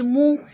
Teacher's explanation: میم کے اوپر پیش ہے، دمہ ہے. میم پیش کو ہونٹوں کی مکمل گولائی سے ادا کرتے ہیں.